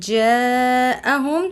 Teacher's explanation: جاءہم جس کی مقدار 5 الف ہیں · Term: مد متصل